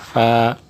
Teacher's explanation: ऊपर के दांतो के किनारे और निचले होठों के तर हिस्से से